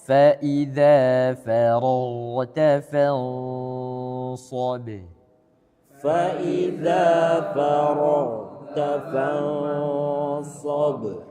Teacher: ikhfa'nya dia tebal karena huruf ikhfa'nya shad dia adalah huruf yang tebal